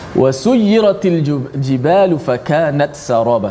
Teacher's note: Sin hujung lidah juga, tapi di belakang gigi bawah. Maka dia ada angin hamas pula. · Ta di hujung lidah, tapi di bahagian atas, gusi pengikat gigi atas. Sin hujung lidah juga, tapi di belakang gigi bawah. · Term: izhar